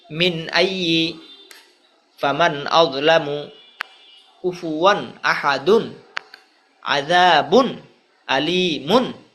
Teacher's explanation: নুনে সাকিন অথবা তানবিনের পরে ইজহারের 6 হরফে যে কোনো এক হরফ আসিলে উক্ত নুনে সাকিন অথবা তানবিনকে গুন্না ছাড়া স্পষ্ট করিয়া পড়িতে হয়।